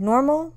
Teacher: whereas normal is stressed on the first syllable